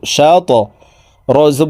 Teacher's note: কলকলার হরফ উপরের দিকে ধাবিত করে ধাক্কা দিয়ে উচ্চারণ করব